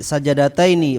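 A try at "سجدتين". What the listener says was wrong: Sajadataini jimnya mati. Sajadataini.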